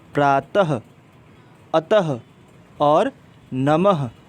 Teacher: इससे कोई शब्द शुरू नहीं होता। इसे बोलने पर ह की ध्वनि निकलती है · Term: विसर्ग